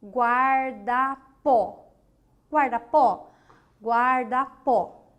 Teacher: A última sílaba é a sílaba forte. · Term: oxítona